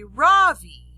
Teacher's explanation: in america people call me ravi with the stress on the first syllable